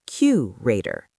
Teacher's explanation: Curator, stress on the first.